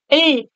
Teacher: மேல்வாயுடைய பல்லின் அடிப்பகுதியை நாக்கின் ஓரங்கள் தடித்து நெருங்குவதால் பிறக்குது அப்படின்றாங்க இல்ல சொல்லும் பொழுது இந்த இடத்துல வந்து நாக்கு தொடும் ல் அப்படிம்போம்